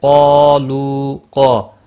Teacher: یہاں پر قاف اور الف دونوں موٹے پڑھے جائیں گے